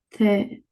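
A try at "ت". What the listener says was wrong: attention parce que là, ça ressemble à un tout. En fait, tu mets ta langue derrière les deux dents et tu fais. essaie de faire ça. Ensuite, après, tu dis tout, tout, ça.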